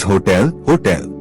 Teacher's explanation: the stress in hotel is on the second syllable